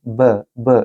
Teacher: बा जो कि उसके ऊपर सकून का साइन है, जज़म की अलामत है, यहाँ कलकला करेंगे